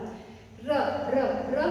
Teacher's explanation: दांत और मसूड़े दोनों पे टच होगा र। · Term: दंत मूल और मसूड़ा